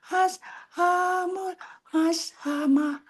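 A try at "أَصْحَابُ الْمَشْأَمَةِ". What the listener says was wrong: Ashabul. Bulnya kurang jelas Bu.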